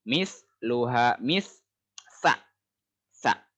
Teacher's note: Jadi si ujung lidah itu nempel di gigi depan.